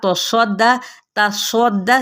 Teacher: दाल को सख्ती से अदा करते हुए तजदीद की वजह से ज़बर फिर पढ़ेंगे लेकिन हरकत को लंबा नहीं करेंगे